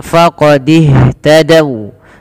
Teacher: waw di sini berhenti, wawnya dimonyokkan